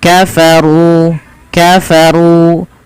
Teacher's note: runya dibaca dengan tebal dan di sini ada Ro tafkim karena ro berharakat